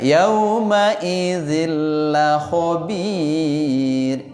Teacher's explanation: Berarti zinnya, nun sukunnya itu dimasuk kepada lam, jadi zillah. Tidak ada sudah suara n-nya di situ, tanwinnya masuk ke dalam la, tapi dengan catatan la guna, tidak boleh la artinya tidak, guna didengungkan. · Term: idgham bila guna